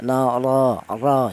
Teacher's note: Untuk menebalkan huruf ra yang dibaca tafhim ya atau tafhim itu tebal artinya yaitu cara menebalkan huruf ra yang dibaca tafhim itu menggunakan lidah bagian belakang diangkat ke atas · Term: tafkhim